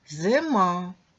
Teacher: ненаголошений и переважно вимовляємо з наближенням до е